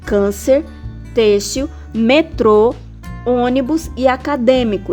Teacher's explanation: ele fecha o som do e do ó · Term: circunflexo